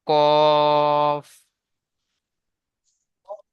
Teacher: কফ তিন আলিফ টান দেবেন তিন আলিফ স্টার চিহ্ন রয়েছে এজন্য মুখ গোল হয়ে যাবে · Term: পুর অক্ষর